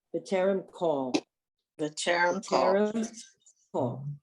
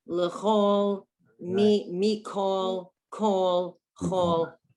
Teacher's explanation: It's irregular. There are certain words in Hebrew that are not pronounced with the kamatz as an ah. They're pronounced with or. And this is one of them.